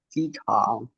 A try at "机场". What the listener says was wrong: 啊，场呀，第三声呀，场是第三声，再来，你每